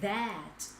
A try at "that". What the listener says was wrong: người Việt Nam cứ tưởng cái này là âm A là that. Không, cái này là âm E dọc miệng xuống à.